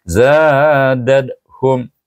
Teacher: Za itu dibaca dengan mad asli dua harakat kerana alif ada selepasnya.